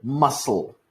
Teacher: or for example the word muscle we do not say muscul we say muscle two s's it's like a longer s basically